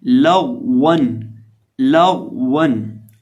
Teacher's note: अब ये जो हमारे पास लाम है इसको बारीक पढ़ा जाएगा, गौन को मोटा पढ़ा जाएगा और वाव को पढ़ते वक्त हम अपने होंठों को गोल करके पढ़ेंगे